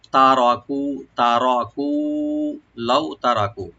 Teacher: ছেড়ে যাবে, বা তারাকু এখানে হলো ফার্স্ট টেন্স, তা ওপেন থাকবে, র ওপেন রাখবেন, রাটাকে ডিপ করবেন, কু একালিফ টানবেন